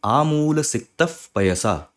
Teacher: जब मैं बोल रहा हूं आमूल सक्त पयसा तो आपको ये विसर्ग की जगह थोड़ा सा ये हिंदी वाला फ ये सुनाई दे रहा होगा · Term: फा का साउंड